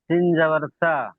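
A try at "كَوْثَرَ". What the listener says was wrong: সিন নয়, এটা হলো সা। সা সা। কাপ ওয়াও জাবার কাউ, সা জাবার সা, কাউ সা, র জাবার র, কাউ সা র, কাউ।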